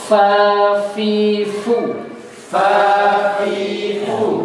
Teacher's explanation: Asyafata ini hurufnya ada fa dari fa dulu ya. Fa itu gigi atas ketemu bibir bawah.